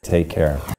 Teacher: Do you hear how the music or the intonation falls after the final stressed word? Take care. That's a falling intonation pattern.